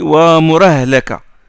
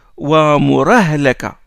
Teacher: le transfert de la haraka de la hamza à la lettre qui la précède. À la base, wa mur, soukoun, et puis ahlaka. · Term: naql